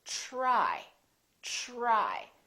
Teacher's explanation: it becomes like a ch sound we say try try so the t r together make this